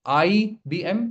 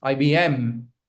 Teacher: I'm putting stress on M the last letter has to be stressed